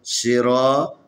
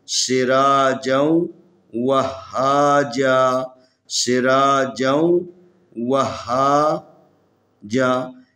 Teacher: را کو تفخیم پڑھنا کیونکہ را کے اوپر زبر ہے